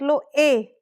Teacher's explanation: देखो कंठ से भी आवाज आ रही है और तालू से भी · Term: कंठ तालव्य